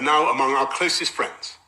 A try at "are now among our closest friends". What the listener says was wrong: You see, or now, not are, or now. Because R meets N, and N is a consonant.